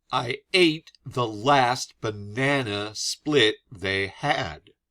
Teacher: I stress every other syllable.